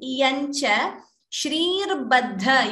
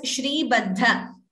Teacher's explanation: You chanted it as shri baddha. Shrir, that r is there, repha.